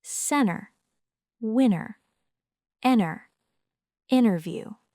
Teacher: The tongue moves into position, but the sound is stopped before air is released. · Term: held T, held T, or unreleased T